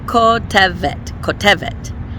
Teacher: And then there's a taf at the end. Because of these two segols, the stress is going to be on the second to last syllable. So, putting in my sample shoresh, we have kotevet, kotevet.